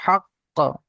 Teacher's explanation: যেহেতু কলকলার অক্ষর, তাই ঝাটকার সঙ্গে কলকলা করে পড়তে হচ্ছে